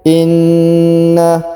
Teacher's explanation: huruf na ditahan dan ditekan karena terdapat tanda tasdid.